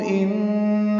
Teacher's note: ان میں نون مشدد ہے، اس میں غنہ ہے